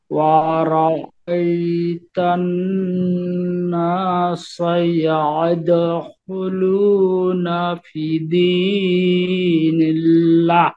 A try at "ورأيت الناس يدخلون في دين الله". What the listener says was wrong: এই যে ফি একালিপটান আছে, আপনি কিন্তু ওই যে সুর বাংলা সুর, ওই বাংলা সুর দিয়েন না, ফি এরকম টান দেওয়া যাবে না, আমরা কিন্তু শুদ্ধ ভাবে শিখতেছি, আমরা এই বাংলা সুর দিব না আর।